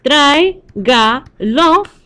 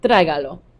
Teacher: We know that the emphasis needs to go on the third to last syllable.